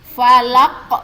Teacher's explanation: Jadi kita kita sukunkan karena kita wakaf tadi ya. Qul a'udzu birabbil falaq. Ya, yang pantulan di ujung tuh falaq. Itu yang dinamakan dengan qalqalah kubro.